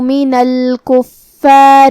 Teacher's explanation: کلمت الکفار میں یہاں فا پہ تشدید ہے تو 2 حرف کے برابر ہمیں فا کو پڑھنا ہے. آخر میں یہاں حرف الرا ہے، را کا حکم ہے ترقیق، مطلب ہمیں اسے ہلکی آواز میں پڑھنا ہے کیونکہ اس کے نیچے زیر ہے.